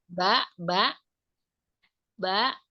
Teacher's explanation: Ba ba ba ee tafatain yaitu ee huruf bibir ee merapatnya dua dua bibir tidak disertai dengan gunah